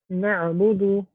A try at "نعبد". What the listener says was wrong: Make it longer.